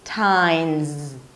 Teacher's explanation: Then you keep it up for a T sound and finish up with the last syllable, tines. The S is actually pronounced as a Z, tines. So it's not times.